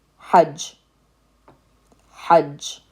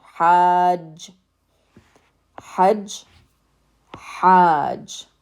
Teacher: the ha is followed by a long vowel, the alif sound. So now it's long. Ha, and then we end on the j sound.